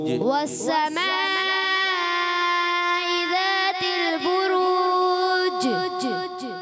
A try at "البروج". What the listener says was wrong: بروج. چی کی آواز نہیں آنی چاہیے. جیم رہے اور مشدد نہیں کرنا. ساکن. بروج.